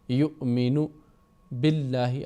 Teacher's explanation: یہاں پر واو کے اوپر حمزہ ہے پھر ساکن ہے تو آواز جھٹکے کی آئے گی